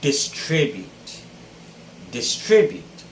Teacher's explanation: the stress should be on the second syllable as well just like contribute